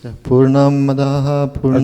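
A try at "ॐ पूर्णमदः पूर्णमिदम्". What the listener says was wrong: I didn't hear the first Om. Can you start over, please?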